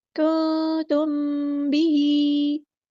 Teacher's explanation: खड़ी ज़ेर आ गई है तो मद असली करेंगे, एक अलिफ के बराबर लंबा करेंगे।